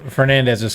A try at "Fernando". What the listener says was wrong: Fernando. No, you said Fernandez.